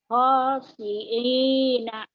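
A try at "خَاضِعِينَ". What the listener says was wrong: Khodi'ina. Ada titiknya Bu. Khodi'ina.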